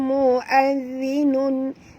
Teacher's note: huruf zal di sini sentilkan lidah